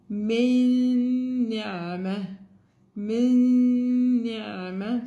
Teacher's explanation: So we don't have noon. The sound of noon is not there. It's only the nasal sound. With تنوين, نون التنوين.